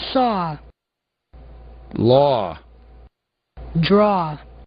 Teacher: onde o A aparece antes do W, essas duas letras formam um outro som que é um som parecido com o nosso O.